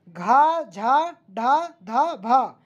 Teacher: ऐसे व्यंजन जिनको बोलने में अधिक प्रयत्न करना पड़ता है, जिनको बोलने में ज़्यादा समय लगे, सीधी सीधी बात, बोलते समय मुख से अधिक वायु निकलती है, बोलते समय मुख से अधिक वायु निकलती है, महाप्राण व्यंजन कहते हैं।